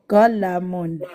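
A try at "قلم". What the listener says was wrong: Ne prolonge pas.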